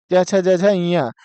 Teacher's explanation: इन वर्णों का उच्चारण स्थान क्या होता है तालू होता है